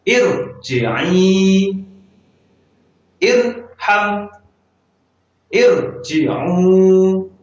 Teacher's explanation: Kalimat perintah dalam Al-Quran, dalam bahasa Arab itu biasanya dimulai dengan kasroh, diakhiri dengan sukun. Nah, apabila kita menemukan huruf ro sukun dalam kalimat perintah, maka ro tersebut kita baca tebal